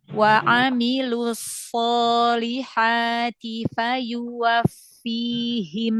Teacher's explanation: So-nya jangan O ya. Aso. Dia karena tebal. Pangkal lidahnya angkat. Rahangnya dibuka.